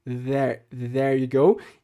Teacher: A primeira palavra, então, there, tem esse som que eu falei de TH entre o lábio e o dente, entre os dentes, quer dizer, só que com bastante vibração nas cordas vocais